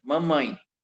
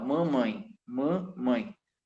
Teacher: Observe que o som saiu pelo nariz som nasal mamãe Mam mãe tá o cedilha né empregado nas